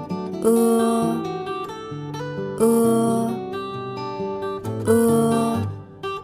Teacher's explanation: vị trí lưỡi hơi cao, thiên về phía sau, môi không tròn.